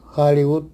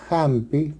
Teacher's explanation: en inglés y en quechua del Perú sí tienen sonido como una jota suave aspirada